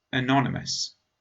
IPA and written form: əˈnɒn.ɪ.məs (Anonymous)